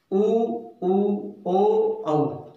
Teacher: अब हम देख रहे हैं ओष्ठीय स्वर। ओष्ठीय स्वर यानी जिन स्वरों का उच्चारण स्थान ओष्ठ है यानी होठ है उनको ओष्ठीय स्वर कहते हैं।